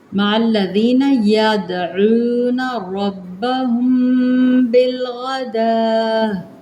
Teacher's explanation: ربهم کے را با کو ہم موٹا پڑھیں گے